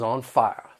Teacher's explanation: Another difference with the Southern accent is the soft R that you might find at the end of some words, especially when it follows a vowel sound, like the word fire becomes fire.